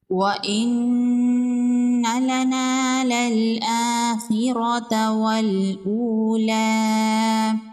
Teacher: کھڑی زبر ہے، ایک الف کے برابر کھینچ کے پڑھیں گے۔ خا حروف مستعلیہ میں سے ہے، خا کو پر پڑھیں گے۔ را پر زبر ہے، را کو پر پڑھیں گے۔ · نون مشدد ہے، یہاں پر غنہ ہوگا۔ الف مدہ ہے، ایک الف کے برابر کھینچ کے پڑھیں گے۔